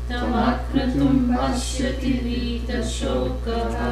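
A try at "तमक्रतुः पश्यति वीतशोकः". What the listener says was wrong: Not akratum, akratuhu. Tamakratuh pashyati vita-shokaha.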